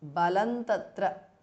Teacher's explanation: balam ends in anuswara followed by ta, so it becomes balan tatra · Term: anuswara changes to n